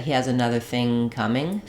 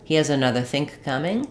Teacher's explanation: my ng sound in thing is just going to continue